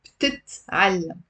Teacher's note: most of my students drop one of the t's. It's she learns is tit.